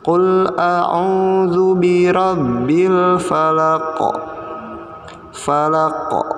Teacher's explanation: Qaf, qafnya harus dibaca dengan dipantulkan karena kondisinya sukun atau mati. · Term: bacaan qalqalah